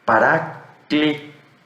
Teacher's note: Então, esse i que você vê aqui, ele é um eta. A maioria dos gramáticos atribui o eta como uma vogal longa fechada, ou seja, com um som fechado.